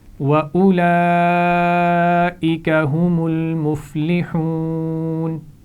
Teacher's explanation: اس لفظ میں حمزہ کے بعد واو ہے، اس واو کو نہیں پڑھنا، یعنی اولئک نہیں پڑھنا، اولئک پڑھنا ہے.